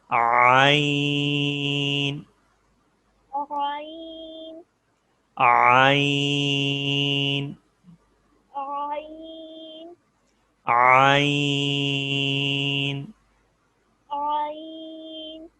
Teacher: عین کو گلے سے ادا کرتے ہیں